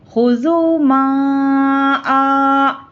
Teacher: 3 الف کے برابر کھینچ کر پڑھیں گے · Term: مد منفصل